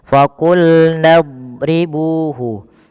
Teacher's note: hati-hati memantulkan huruf doad memantulkan huruf dad huruf dad tidak boleh mantul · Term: huruf dot